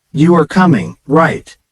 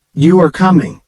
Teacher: the pitch of your voice Rises at the end of the sentence because it's a question